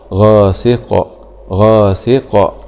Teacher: غين فتحة غ، ألف سكون مد طبيعي غ، سين كسرة سي غاثي، قاف كسرتين إن غاسك غاسك، نقف عليها بالسكون العارض مع قلقلة القاف